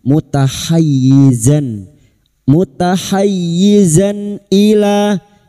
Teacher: alif di atas dua harokat mad tabi'i, dua harokat kita panjangkan